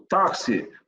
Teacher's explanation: o X tem som de KS, uns gramáticos falam até CS, né? Então, o táxi tem 4 letras e 5 fonemas.